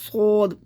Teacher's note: زبان منہ کے اندر رہنی چاہیے اور سیٹی بھی آئے گی